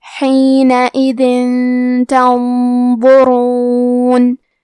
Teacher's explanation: تا حروف الاخفاء میں سے ہے تو ہم یہ حکم کو غنہ کے ساتھ ادا کریں گے